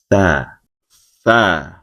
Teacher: tha adalah dibunyikan dengan mengeluarkan sedikit bagian ujung lidah bertemu dengan gigi seri atas.